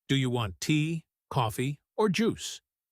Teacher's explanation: Each item gets its own little rise, building up until the very last one often gets the highest lift, like a small musical climb.